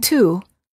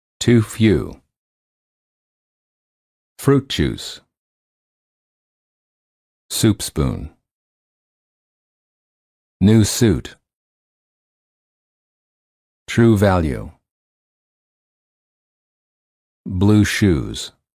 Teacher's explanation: For the ooh sound, the lips are tense and rounded as if you're blowing a balloon. And the tongue is slightly tense and raised high.